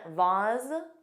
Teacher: Both pronunciations, vase, which rhymes with face, and vase, which has an ah but a z sound